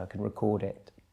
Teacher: if you shift the focus, the emphasis of your voice towards the second syllable, you get the verb